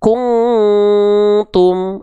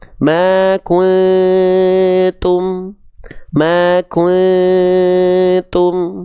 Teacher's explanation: Tandanya dia terlalu kuat. Terlalu masuk hidung semua. Harusnya ma kuntum.